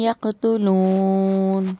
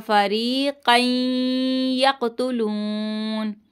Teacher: क़ाफ की आवाज़ पलट कर आएगी